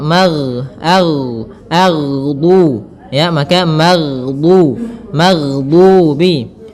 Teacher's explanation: Kesalahan yang sering terjadi adalah memantulkan huruf ghain yang mana pada dasarnya huruf ghain tidak boleh mantul akan tetapi dia memiliki sifat yaitu mengalir suaranya